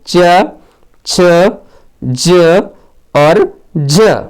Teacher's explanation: तालव्य वर्ण है, यानी इनका जो उच्चारण है वो तालु से होता है